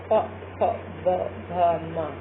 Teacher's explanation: आपको देखने से ही लग रहा है कि इसको स्पर्श क्या कर रहा है, होंठ, तो होंठ स्पर्श कर रहे हैं इसलिए इन्हें ओष्ठ वर्ण कहते हैं।